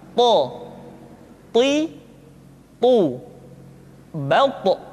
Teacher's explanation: th diucapkan dengan menyentuhkan ujung lidah dengan gusi-gusi dua gigi seri bagian atas · ketika to diucapkan, suara kita terdengar menebal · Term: huruf th, sifat al-itbaq, huruf to